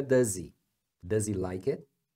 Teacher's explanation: é does o som final desse s é Z aí quando emenda com o He que perdeu H fica does